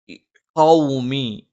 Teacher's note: ഉവ്വ രണ്ട് ചുണ്ടും വൃത്താകൃതിയിൽ വെച്ചുകൊണ്ടാണ്. മ രണ്ട് ചുണ്ടും തുല്യമായി അടച്ചു വെക്കണം.